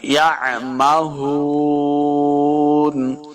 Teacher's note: یا زبر عین یا مہون، یہ ہاء کا سائن بنا ہے، ہا کو حلق کے نچلے والے حصے سے ادا کریں گے